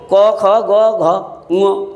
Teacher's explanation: कण्ठ्य भनेको घाँटीबाट उच्चारण हुने भनिएको हो। क ख ग घ ङ भनेपछि ग चाहिँ तेस्रोमा पर्यो, त्यही कण्ठ्यमा पर्यो।